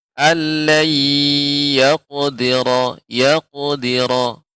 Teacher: pada kata yaqdiru, yaqdira, qafnya juga lebih ditebalkan.